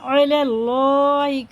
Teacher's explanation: یہ اللہ کا لام زبر کے ساتھ ہے تو پر پڑھیں گے، موٹا کر کے پڑھیں گے